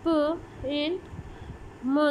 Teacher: बायलेबियल्स using closing movement of both lips, for example प एंड म sound.